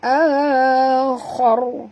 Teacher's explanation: Kerana huruf kha juga huruf isti'la, dan ra bila dia mati, bila kita matikan dia, huruf yang sebelumnya baris atas kita kena baca tebal